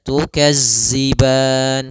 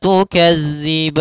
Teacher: ujung lidah kita menempel dengan gigi seri atas sehingga terdengar dengan sempurna untuk makhraj daripada makhraj huruf dzal